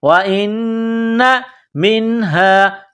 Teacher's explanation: نون مشدد ہے یہاں غنہ کریں گے آواز ناک میں چھپائیں گے